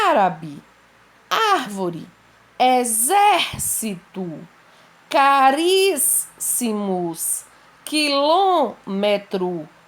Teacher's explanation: como a antepenúltima é a mais forte a acentuada então fica fácil para identificar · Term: proparoxítonas